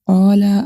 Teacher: الف مدہ، اس کو ہم 1 سیکنڈ تک لمبا کریں گے. قاف کو پر پڑھیں گے.